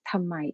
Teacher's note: undergone phonetic change by progressive assimilation, where the dental plosive d is assimilated into bilabial nasal m